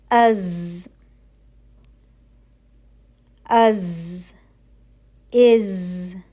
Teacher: ताकि सीटी की आवाज सीटी की सी आवाज पैदा हो सके सीटी की आवाज पतली होगी और थोड़ी सी जो है वह बजिंग होगी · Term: हर्फ ज